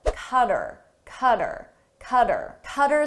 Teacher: I get rid of the H sound and it sounds like but then I combine it to the